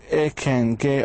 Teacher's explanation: The back of the tongue goes up, so we produce K and G.